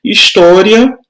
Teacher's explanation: O som do A é mais forte do que do I. Então, eu tenho uma semivogal e uma vogal.